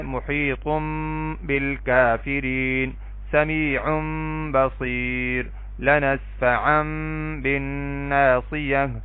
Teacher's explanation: محیطن ہے نا، یہاں پہ تنوین ہے نا، تو تنوین کے بعد با ہے تو با اگر آئے گی تو پھر ہم کیا کریں گے؟ تنوین کے اندر جو نون کی آواز ہے اس کو میم سے بدل دیں گے